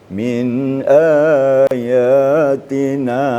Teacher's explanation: agak kelewatan seperti 1,5 alif gitu. Seharusnya 1 alif. Min ayatina.